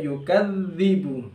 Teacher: huruf dal tasydid ya, yukadzibu ya. Dalnya tipis ya